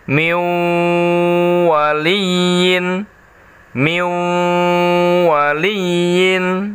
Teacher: nun sukun nya masuk ke dalam huruf wow melebur suara n-nya menjadi hilang · masuk ke dalam huruf wow melebur suara n-nya menjadi hilang Hai yang terdengar suara wownya dengan cara membacanya ditahan